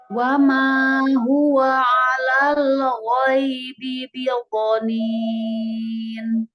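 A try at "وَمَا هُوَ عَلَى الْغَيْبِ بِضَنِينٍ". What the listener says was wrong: Wamanya bagus. Cuman huwa dengan ala itu agak tebal. Wama huwa alal gitu. A-nya bersihkan dari suara hidung.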